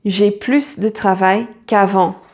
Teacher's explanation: plus de travail, so you pronounce the S